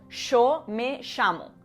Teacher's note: en Argentina es muy común escuchar que la Y y la L se pronuncien como una sh. Por ejemplo, yo me llamo.